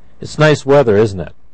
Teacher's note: it's also possible to form tagged questions with falling intonation